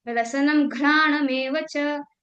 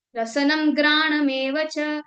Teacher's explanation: इसी साउंड का अगर हम महाप्राण कन्वर्ट कर दें तो ये घ बन जाएगा लेकिन इसी साउंड को ये जो घ लिखा है अगर हम अल्पप्राण के साथ बोले तो इसका साउंड ग आएगा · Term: अल्पप्राण महाप्राण